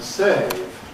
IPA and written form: seɪv (save)